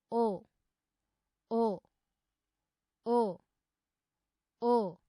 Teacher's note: ओ वर्णस्य उच्चारणे कण्ठः ओष्ठौ च अधिकौ सक्रियौ भवतः।